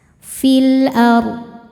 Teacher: F'il alif lamnya dinamakan dengan alif lam qamariah. Karena alif lam menghadapi huruf qamariah yaitu hamzah maka lam sukun dibaca jelas. · Huruf ro sukun dibaca secara tafkhim karena sebelumnya fathah maka rnya tebal. Ar dan dod harus tetap terbaca. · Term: alif lam qamariyah